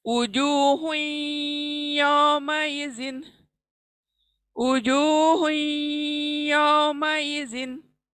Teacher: उजूहुन, उजूहुन आया है क्योंकि तनवीन आया है, उजूहुन और यौमाइजिन। अब हुन के नून को हम या में मिला देंगे, इदगाम कर देंगे